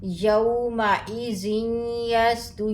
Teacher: یہاں پہ نون کی ساؤنڈ نہیں آئے گی، یا کی آئے گی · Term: ادغام